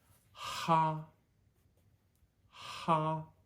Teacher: this H and H in English is pretty quick in Mandarin the H and the a take up an equal amount of space in this syllable